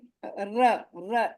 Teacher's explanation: रा बोलने में जीभ एकदम बेलनाकार होकर लुंठित होती है आगे